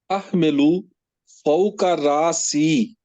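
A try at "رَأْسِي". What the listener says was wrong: रा नहीं पढ़ना ना, रासी मैं प्यारे भाई मैं अर्ज करूंगा, अलिफ के ऊपर जज़म है तो इसी को पढ़ा रासी, इसी तरह ता के बाद अलिफ के ऊपर जज़म है तो इसको कैसे पढ़ेंगे, इसको भी उसी तरह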